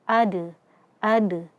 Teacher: jangan sampai membaca atau menambahkan hamzah sukun di akhirnya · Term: qalqalah sughra